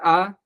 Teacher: मुख को देर तक खोला है, थोड़ा बड़ा अधिक खोला है, तो समय भी अधिक लगेगा। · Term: दीर्घ आकार